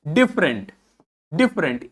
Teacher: ई को तो हम प्रोनाउंस ही नहीं कर रहे हैं यहां पे